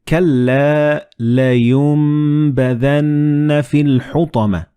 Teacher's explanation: So the noon and ba, they will be assimilated together and you will pronounce them as meme.